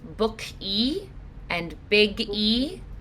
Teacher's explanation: if a word ends in a hard consonant, like book or big, they're going to add an e sound after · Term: adding e to the end